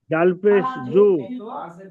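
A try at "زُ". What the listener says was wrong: হ্যাঁ যা, ওটা জাল নয়, যা। যা পেশ জু।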